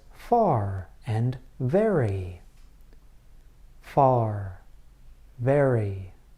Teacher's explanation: consonant sounds that involve the bottom lip and the upper teeth